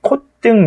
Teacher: 콧등 이렇게 디귿으로 시옷을 디귿으로 발음하는 거 허용한다